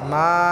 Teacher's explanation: মাটা আমরা এক আলিফ টেনে পড়ব